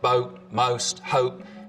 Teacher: Down in North Carolina, we really start to hear pretty significant goat fronting again. So the vowel sound in boat, most, hope starts with the tongue further forwards in the mouth